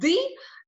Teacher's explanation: Голосові зв'язки при цьому вібрують, тобто звук «ди» це дзвінкий звук